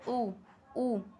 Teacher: ऊ बोलकर देखो, मुंह आपका गोल ही हो जाएगा।